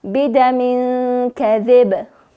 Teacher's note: چون تنوین دو زیر به ساکن مبدل میشه و همچنان که با ساکن شد قلقله میشه، باید کم تکانش بدیم